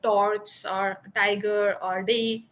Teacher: there is a replacement of RP alveolar ta da by the retroflex ta da. So retroflex ta and da are not there in English.